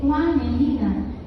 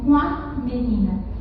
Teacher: Veja que esse com, a nasalização ficou sugerida ao núcleo da sílaba que é o A.